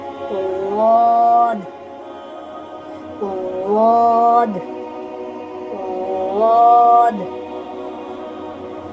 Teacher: اس کا اصل جو مخرج ہے وہ آپ کے لیفٹ سائڈ کے جو اوپر والے دانت ہیں ان پر زبان کی نوک لگے گی تو اس کی آواز نکلے گی